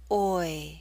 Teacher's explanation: mid position to a high position o o toy toy o it may help you to know that we're using a slight Y sound y to make this Glide possible oi the sound is written